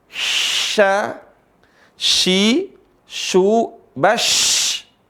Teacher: tengah lisan ketemu langit-langit